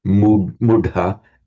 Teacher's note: the h plus the t merge into a dh, mudha, and the u lengthens